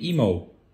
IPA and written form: ˈiːmoʊ (Emo)